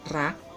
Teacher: Rak terdiri dari konsonan kelas rendah R, ditambah vokal pendek A, ditambah konsonan akhir K yang merupakan akhiran mati, maka nadanya nada tinggi ya.